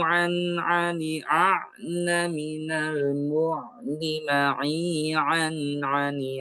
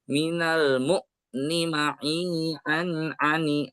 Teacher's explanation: huruf ain ini ketika disukunkan dia akan sedikit memanjang ya, melandai memanjang. Jadi tidak menghentak ya